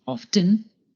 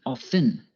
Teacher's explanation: Often can be pronounced two ways, by pronouncing the T, often, or by not pronouncing the T, often.